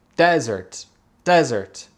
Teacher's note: En français, un mot a un son S, un mot a un son Z. En anglais, les deux mots ont un son Z, mais ça se prononce avec les accents toniques différents.